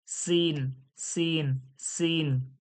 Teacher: এটা সির সির করে সিন, সিন শিরশির ও পাতলা আওয়াজ